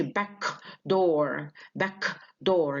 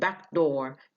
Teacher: they follow each other without releasing the first consonant